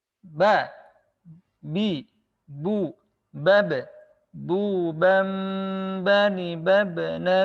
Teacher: dengan merapatkan kedua bibir satu sama lain menyentuhkannya tanpa mengalirkan udara kalau mim tadi itu adalah ada aliran suara ya bukan udara